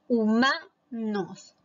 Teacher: Sílaba tónica en la penúltima, que es la sílaba ma. Por lo tanto, también es una palabra grave.